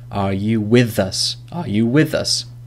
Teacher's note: the last sound in with is th, and us, the first sound in us is a. So we link that together. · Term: linking